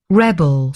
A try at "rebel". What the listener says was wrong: Yeah, pretty good. Rebel. Once more.